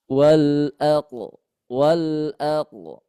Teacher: Karena qof itu keluarnya dari pangkal pangkal lidah dan juga pangkal lidahnya ter terangkat.